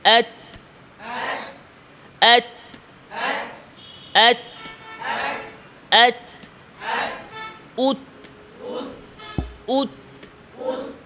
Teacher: তাতে সিদ্ধাও আছে হামসাও আছে, আওয়াজ বন্ধ প্রথমে, এরপরে বাতাস জারি